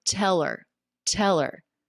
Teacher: We have a dropped H, the ER, the schwa R ending just links on to the word before.